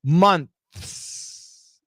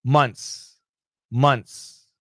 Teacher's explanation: And then you can hear my S at the end. But when Americans say it fast, the TH is gone, and we say months, months.